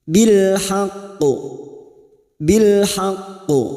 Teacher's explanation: ini dinamakan qalqala Kubro yang mati karena kita baca wakaf dan bertasdid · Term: qalqalah kubra